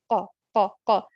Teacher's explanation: جو قاف کی آواز آ رہی ہے یہ تبھی پیدا ہوتی ہے جب ہماری زبان کا پیچھے والا حصہ ہمارے نرم تالو کے ساتھ جا کے چپکتا ہے